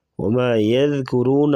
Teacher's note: ذال کو نرمی سے پڑھیں گے، يذكرون را کو پر پڑھیں گے